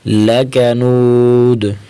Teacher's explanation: جب وقف کریں گے تو دال کو ساکن کر دیں گے